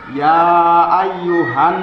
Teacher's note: ada mim berharokat ini ada Nun berharokat cara membaca ghunnah musyada harus dibaca dengan sangat berdengung